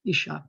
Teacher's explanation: isha by the way accents on the last syllable